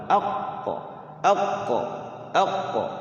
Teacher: Kalau qof dia enggak boleh ada anginnya ditahan. Qoq ada qalqalahnya.